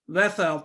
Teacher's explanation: طا تھک، اس کو تھک پڑھا اور نیزل ساؤنڈ کے ساتھ